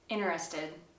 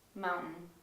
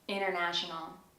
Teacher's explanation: Sometimes the T sound is omitted altogether.